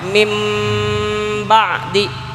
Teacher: Definisi iklab itu harus menjaga gunnahnya, yaitu nun mati ketemu ba, nun atau tanwin ketemu huruf ba, maka harus dijaga gunnahnya